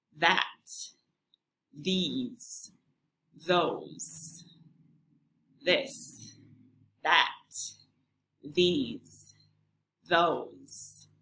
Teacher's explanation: your tongue is sticking out a little and you can feel a vibration when you say words with the voiced th sound · our tongues sticking out a little the first th sound is we call this the voiced th sound because you use your vocal chords to make this sound so if you put your hand on your throat you'll feel